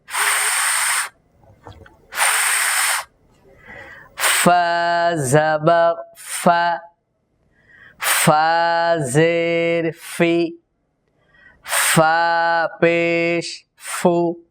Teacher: ফা এর মাখরাজ হলো নিচের ঠোঁটের প্যাট, সামনের উপরের দুই দাঁতের আগা।